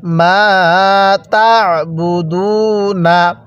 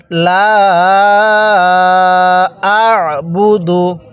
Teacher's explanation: আইনটা পড়ার সময় আমরা গলার মধ্যে হালকা চাপ দিয়ে পড়লে আইনটা সহি শুদ্ধ উচ্চারণ হবে অনেকেই আমরা আইনটাকে হামজা পড়ে থাকি যার কারণে পড়াটা সহি শুদ্ধ